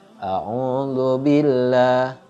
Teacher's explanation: ini bacanya tarqiq dibacanya tipis